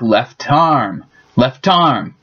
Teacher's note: the T from left tends to jump over to the other word to make it sound like left arm